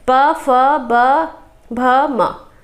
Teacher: आप बोल कर देखिए तो आप के होठ का ही सहारा लिया जाता है इसे बोलने के लिए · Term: प वर्ग